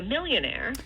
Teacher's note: with a low plus high star the high peak the starred part of this is gonna be on the stressed syllable and that's going to be preceded by a sharp rise in pitch